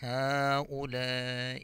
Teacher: ہا کو بھی کھینچ کر پڑھیں گے اور لام کو بھی کھینچ کر پڑھیں گے